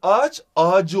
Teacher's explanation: Bak Ç sertken c diye yumuşamış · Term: ünsüz yumuşaması